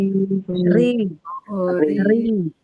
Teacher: R tebal tapi ketika kasrah dia tipis. Ri ri tuh ri tuh tipis.